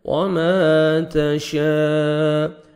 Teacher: پڑھنا ہے وما تشاء مد واجب ہے دیکھیں اسی کلمہ میں حروف مدہ کے بعد حمزہ آ رہے ہیں آپ نے 3 سے 4 سیکنڈ ایکسٹرا مد کرنی ہے · الف مد ہے 1 سیکنڈ میم کو کھینچنا ہے تا کو باریک پڑھنا ہے وما تشاء مد واجب ہے دیکھیں